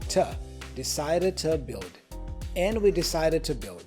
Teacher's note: The to gets reduced to a schwa sound, the vowel, so to.